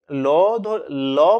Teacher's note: কারণ হচ্ছে ল বললে আমাদের জিবা একটা জায়গায় আটকে যাচ্ছে এবং দুদিক দিয়ে বাতাস দু সাইড দিয়ে বাতাস বেরিয়ে যাচ্ছে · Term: পার্ষিক ধ্বনি, পার্শ্বিক ধ্বনি